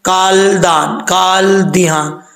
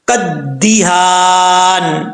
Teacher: اب اس کو کچھ لوگ پڑھتے ہیں جن کو نہیں پتا، وہ سمجھتے ہیں کہ کاف کے بعد الف بھی پڑھا جائے گا، لام بھی پڑھا جائے گا، پھر دال کے ساتھ ملائیں گے، ایسا نہیں ہوتا۔ جب کاف کو دال کے ساتھ ملائیں گے بیچ میں الف اور لام گر جائے گا